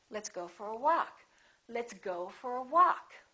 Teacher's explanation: go gets some stress but walk gets a lot more stress